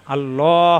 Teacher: এখানে হচ্ছে জবর এজন্য ল হবে মোটা হবে ল এ আকার প্রকাশ পাবে না